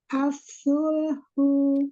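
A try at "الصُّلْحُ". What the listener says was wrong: Ya, angkat lagi pangkal lidahnya, shotnya. As-sulhu. Sulhu. doma su, lamnya balik bibirnya ke lam. As-sulhu.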